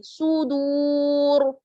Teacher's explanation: را کو ساکن کریں گے اور یہاں پر بھی دیکھیے را ساکن، واو ساکن، اس سے پہلے پیش تو را کو موٹا پڑھیں گے